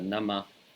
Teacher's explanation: echo the preceding vowel with an intervening H sound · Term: visarga